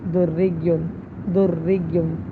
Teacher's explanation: تو دیکھیں را مشدد ہے اس کے نیچے زیر ہے تو اس کو ہم باریک پڑھیں گے